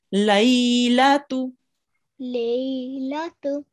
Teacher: You did prolong the ya for the right amount of time.